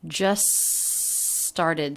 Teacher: a consonant we tend to drop the t just started so the two words linked together with a single s sound · just started just started she just started the t is dropped this is really common with the s t cluster at the end when the next word begins with a consonant we tend to drop the t